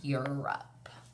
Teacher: we don't say it with a long Oh sound we say it with the short u sound